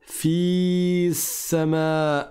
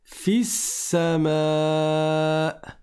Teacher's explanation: et la voyelle longue elle va disparaître